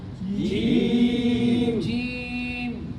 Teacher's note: Nah, jim itu tengah lidah kita tekan ya pada tengah-tengah langit-langit. Jadi benar-benar tidak ada efek aliran suara, gesekan suara atau aliran nafas. Jadi bukan ci atau ji ya.